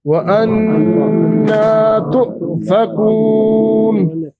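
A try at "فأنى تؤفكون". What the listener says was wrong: आपने वाव पढ़ा ना फा की जगह पे।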